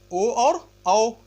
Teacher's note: कुछ होते हैं कंठ और ओष्ठ से ओ और औ